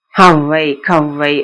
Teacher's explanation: இரண்டு மாத்திரை ஒளிக்க வேண்டிய அவை ஒரு மாத்திரை அளவாதான் ஒளிக்கும். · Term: ஐகார அவகார குருக்கங்கள்